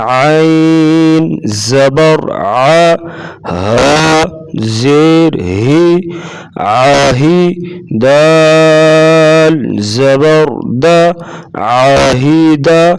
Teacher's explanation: عین کی آواز گلے سے نکالیں گے، عین اور ہا کی آواز علیحدہ علیحدہ ہوگی اور آواز میں نمایاں فرق واضح کریں گے، جیسے عین زبر ع، ہا زیر ہی، عاہی دال زبر د، عاہدہ۔